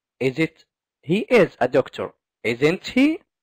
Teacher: The first thing we talked about, rising intonation, such as in, he's a doctor, isn't he? So, at the end, it's rising, it's going up, it's going high.